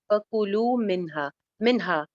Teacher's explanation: कु सिंगल हरकत, लू एक अलिफ लंबा